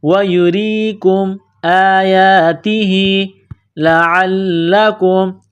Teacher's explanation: عین کو لام کے ساتھ ملانا ہے، لام میں سختی کرنی ہے